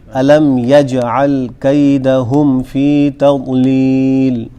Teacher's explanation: یجعل میں جیم پہ قلقلہ ہوگا